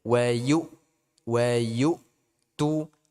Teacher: ini hamzah jangan sampai dia mengalir